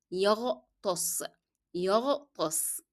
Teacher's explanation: then ta is a hard letter, then sin is a soft letter